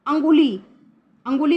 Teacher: सांझ, तो हम जब सांझ बोलते हैं तो चंद्र बिंदु की आवाज़ आती है, अनुस्वार की नहीं। अंगुली, अंगुली बोलते हैं तो अनुस्वार की आवाज़ आती है, चंद्र बिंदु की नहीं।